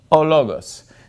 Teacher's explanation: the word for god the accent is on the second syllable